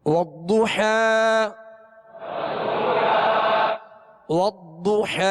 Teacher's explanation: ضاد پر پیش ہے ہونٹوں کو گول کر کے پڑھیں گے اور ضاد کو پر پڑھیں گے